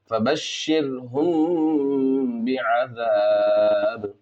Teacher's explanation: اب یہاں پر اخفاء شفوی ہوگا اس لیے کہ میم ساکن کے بعد با ہے، غنہ اور اخفاء کے ساتھ پڑھیں گے